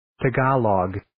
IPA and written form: tɑ'ɡɑlɑɡ (tagalog)